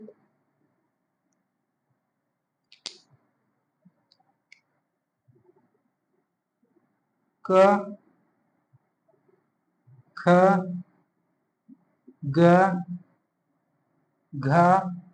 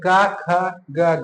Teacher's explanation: जिन वर्णों का उच्चारण करते समय जीभ का पिछला हिस्सा हमारे कंठ को छू कर निकले, उसे कंठीय व्यंजन कहते हैं।